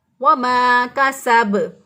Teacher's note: काफ को बारीक पढ़ेंगे, सीन को भी बारीक पढ़ेंगे, और सीन की अदायगी में टिडिया जैसी आवाज़ या सीढ़ी जैसी आवाज़ आनी चाहिए